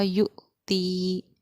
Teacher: اور حمزہ پہ ساکن ہے تو حمزہ ساکنہ کے پڑھنے میں ہمارا جھٹکا ہوگا اس لیے ہم نے اس کو پڑھا یو تی.